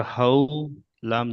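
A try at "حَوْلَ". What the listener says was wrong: হাউ বলে টান দিলেন কেন? হুম, ইজিরা করেন। নরম আওয়াজে, নরম আওয়াজে তাড়াতাড়ি পড়তে হয়, এশকের।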